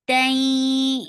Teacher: idgham with gunna, and this gunna is akmal, so give a nice gunna here